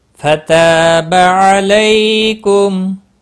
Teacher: فتح تا الف مدہ ہے، ایک الف کے برابر کھینچ کر پڑھیں گے